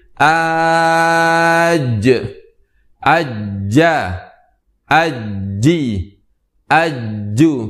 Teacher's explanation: lidah yang paling tengah kita tempelkan ke langit-langit yang tengah pula di bagian atas sehingga lidah yang tengah tersebut menempel ke bagian atas langit-langit kita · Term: huruf Jim